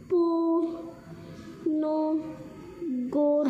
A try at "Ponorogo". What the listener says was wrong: Mana gonyo ini R lo. R sama or. jadi Ponoro. Go. Ponorogo jadi